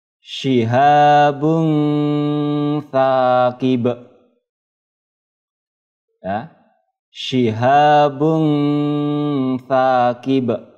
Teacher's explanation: menyamarkan bunyi domah tanwin ke huruf berikutnya ya, sesudahnya. Yaitu huruf tha. Sengau ya, sengau atau mendengung.